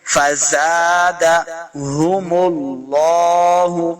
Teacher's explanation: لفظ اللہ کا لام ہمیشہ موٹا کر کے پڑھنا ہے.